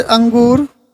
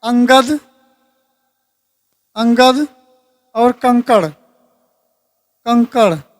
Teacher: ये स्वर के बाद आने वाला व्यंजन है जिसकी ध्वनि नाक से निकलती है। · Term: अनुस्वार